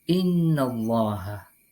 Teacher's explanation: Hukum bacaan ini disebut dengan idgham, disebut dengan gunnah. Cara membacanya yakni dengan mendengungkan 2 sampai dengan 2,5 ketukan.